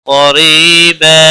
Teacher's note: قریبا قاف حروف مستعلیہ میں سے پر پڑا جائے گا.